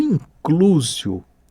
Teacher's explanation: ele tem um L e a língua vai ali no céu da boca